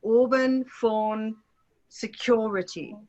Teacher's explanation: far back vowel that is the British one